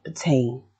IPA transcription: pəteɪn